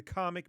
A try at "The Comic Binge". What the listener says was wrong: Binge. Yeah, you said comics binge the first time, but I forgive you.